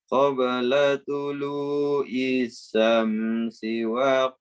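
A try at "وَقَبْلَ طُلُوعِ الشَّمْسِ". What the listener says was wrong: Ain, tulu'ish. qabla tulu'is. Ya, syamsinya pendek, nanti lanya pendek. yang salahnya sedikit aja, yang penyebutan huruf ain ya.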